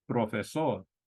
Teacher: the P also not as sharp in Spanish as in English if you think of B when you're saying the Spanish P